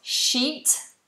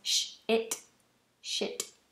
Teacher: if you shorten the vowel, it becomes a swear word. It becomes sh-it, shit, naughty word.